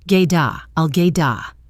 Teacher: Now, for the words "get a," this is a classic example of sound linking with a flap T. The final T of get changes to a soft D sound and connects directly to the A, which sounds like ugh.